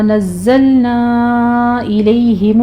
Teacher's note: مد منفصل ہے نا کے اوپر 4 کاؤنٹ کرنا ہے اس کو